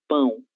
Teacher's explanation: el sonido de pão, el aire sale por la nariz, es un sonido nasal